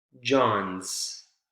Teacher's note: Instead of is, just z, consonant sound. So the vowel sound is omitted altogether, right? The I vowel sound.